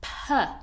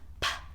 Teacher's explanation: It's a puff of air, an explosive of air out our mouth, and we shouldn't put that voiced sound.